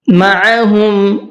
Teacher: عین کو بھی حلق سے نکال کر کے پڑھنا ہے۔